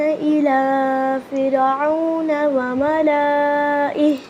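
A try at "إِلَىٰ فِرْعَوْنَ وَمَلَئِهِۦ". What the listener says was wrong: नहीं बेटे, लाम को लॉन्ग नहीं करना। लाम जबर के आगे अलिफ के ऊपर ये जो छोटा सा निशान नजर आ रहा है ना, उस सर्कल, इसे कहते हैं कसरा।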